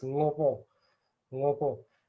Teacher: It's for me, it sounds closer to the pa because it's kind of crisper, it's cleaner, because of having no aspiration and being high in tone.